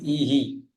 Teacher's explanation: ઈ ની પાછળ વિસર્ગ હોય તો ઈ ઈ હે નહીં પણ ઈ હી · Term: વિસર્ગનું ઉચ્ચારણ